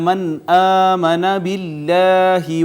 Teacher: نون ساکن کے بعد حمزہ آ گئی، لہٰذا یہاں پہ اظہار ہوگا